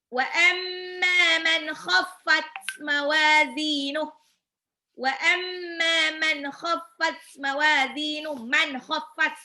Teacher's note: Ghain sama kha itu harus ngorok karena dia ada di tenggorokan atas